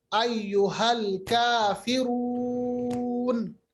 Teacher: तो यहाँ पर जो मद है ये मद मुनफसिल है। 3 अलिफ के बराबर लंबा कीजिए